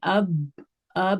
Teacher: اب میں ہمارے ہونٹ جہاں مل گئے، جہاں سے ساؤنڈ آ رہی ہے، بس وہی اس کا مخرج ہے